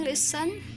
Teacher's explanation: listen dua suku kata ya, terdiri dari dua suku kata dan penekanannya itu dalam pengucapannya di suku kata pertama